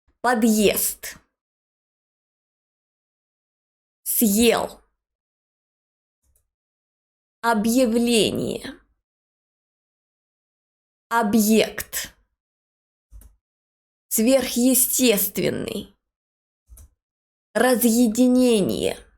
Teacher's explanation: But not when the hard sign is used. When we use the hard sign, the previous consonant is hard, and the following vowel, soft vowel, is pronounced as it is in the alphabet.